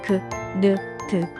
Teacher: 입술을 옆으로 당기면서 소리내는 모음입니다